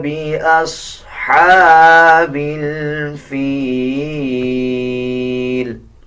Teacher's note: جب وقف کریں گے تو لام کا زیر سائلنٹ کر دیا جائے گا اور لام کو آدھا پڑھا جائے گا